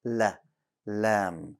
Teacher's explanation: bring your tongue closer to the bumpy side of your gums and pronounce the lam there, keeping it light, right, and no air.